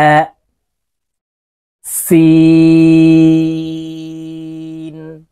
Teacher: বাতাস বের হবে চার আলিফ টান হবে